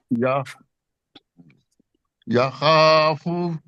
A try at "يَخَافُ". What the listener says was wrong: نہیں، آپ کا جو ہے نا یا یہ کے اوپر زبر وہ یا ایسے لگتا ہے. آپ نے بغیر ہونٹ اوپر کیے وہ پڑھنا ہے.